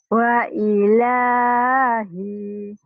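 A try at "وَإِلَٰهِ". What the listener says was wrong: Kenapa hi-nya panjang? Ayo.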